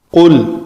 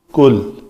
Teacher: قل، قاف، قاف جو ہے اس کا مخرج ہے لوتھڑا جو لٹک رہا ہے گلے میں، کوا جسے کہتے ہیں اردو میں، وہ جب بالمقابل تالو کے ساتھ لگے تو وہ قاف ادا ہوتا ہے، اور یہ پر حرف ہے قاف، اس سے ذرا آگے کاف